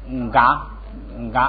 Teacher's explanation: 要读成这个前面要加个n，意思就是带个鼻音